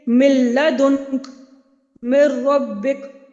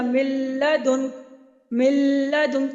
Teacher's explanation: جیسے کہ دیکھیے من لدنک، من ربک، تو یہاں پہ دیکھیے نون ساکن کے بعد لام اور نون ساکن کے بعد را آ رہا ہے، تو میں نے اس کو فوراً سے ادا کیا، میں نے یہ نہیں کیا من لدنک، من لدنک، اس طرح کریں گے تو غنہ ہوگا۔ تو لام اور را پہ ادغام تو ہوگا لیکن غنہ نہیں ہوگا، بغیر غنہ کے ہوگا، اسی لیے اس کو کہتے ہیں ادغام بلا غنہ۔